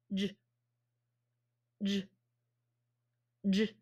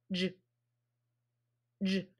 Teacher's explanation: it's like a fat puff of air when you make that sound. · Okay, and so this is called a fat puff because a fat puff of air is coming out of your mouth as you make this sound. And it's a voiced fat puff because you're saying J and it's voiced and vibrating